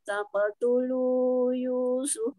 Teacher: ini qafnya memantulnya ikut tebal ya, karena huruf qaf ini huruf isti'lah